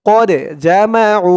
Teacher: এই দালটা কলকলার হরফ ধাক্কা দিয়ে পড়তে হবে